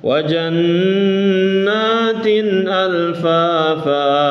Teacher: Kemudian wajanna, ini nun tasdid ditahan.